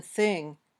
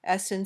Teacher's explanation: your tongue touches the bottom edge of your top teeth or it might stick out a little bit between your teeth then the air comes out gently it's a voiceless sound when